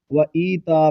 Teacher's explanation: وَإِيتَاءِ ذِي الْقُرْبَى، اس لفظ کو وَإِيتَا پڑھیں گے، یا کو ایک الف کی مقدار کھینچیں گے، وَإِی آگے تا یہاں پر مد متصل ہوگی اور حمزہ بشکل یا ہے، یہاں اس کو لمبا کر کے نہیں پڑھیں گے۔